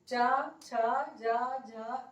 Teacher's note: इन वर्णों को उच्चारित करते समय वायु जो है वो तालु को स्पर्श करती है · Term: तालव्य वर्ण